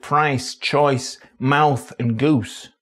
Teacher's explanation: many vowels which are monophthongs in surrounding accents are quite extreme diphthongs in Manc. By that, I mean, the tongue travels quite a way between the beginning and end of PRICE, CHOICE, MOUTH and GOOSE